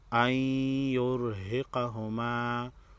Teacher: نون ساکن کے بعد حروف یرملون میں سے یا ہے ادغام مع عنہ ہوگا